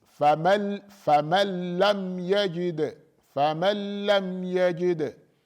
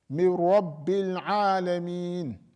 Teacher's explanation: you remove the nun completely. There is no nun left and there is no characteristic of the nun left. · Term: complete idgham